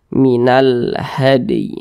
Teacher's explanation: huruf Dal termasuk salah satu huruf huruf Qalqalah jadi apabila dia sukun maka cara bacanya dipantulkan Minal had seperti itu dan ini termasuk kepada Qalqalah Sugra Nah